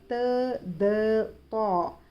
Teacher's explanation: ज़बान की नोक ऊपर के दांतों के जड़ों को लगने से त, द, त अदा होते हैं।